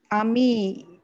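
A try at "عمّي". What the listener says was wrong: Di sini tasdidnya salah naro ya. Harusnya tasdidnya ini di atas mim. Ammi, harusnya gini. Ammi, ya. Jadi bukan ami tapi ammi, ya.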